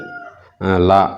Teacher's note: மேலண்ணத்தின் நடுப்பகுதியை தொடுவதால் பிறக்கும் எழுத்து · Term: பொது லகரம்